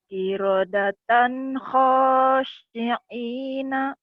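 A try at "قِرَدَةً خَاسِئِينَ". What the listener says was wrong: bukan ain tapi ya hamzah. Kirodatan khosiina yang kirodatan khosin kecil. Kirodatan khosiina.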